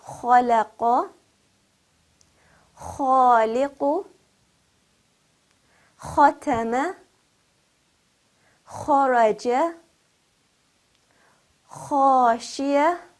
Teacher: kha with fatha, pronounced heavily with a full mouth, rounded, will be pronounced as kha. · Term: heavy quality